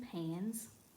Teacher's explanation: if suffix s follows a voice consonant the S is voiced as in pans